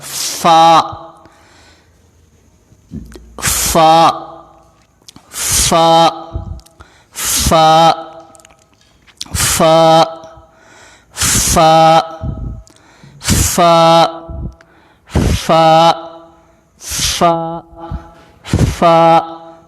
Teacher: اوپر والے دانت نیچے والے ہونٹ کے اندرونی حصے سے لگے تو یہ لفظ ادا ہوگا